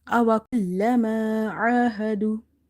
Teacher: Ain is having vertical fatha, so we will stretch the sound, as well as Ain is from the middle of the throat. Ha is from the bottom of the throat, and the word do before waw sakin there is a dama.